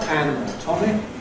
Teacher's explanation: And then various other stress rules cause the secondary stress on the fist syllables, so we have some degree of stress on the /æn/ and /tɒm/, but not on the /ə/ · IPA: /ˌænəˈtɒmɪk/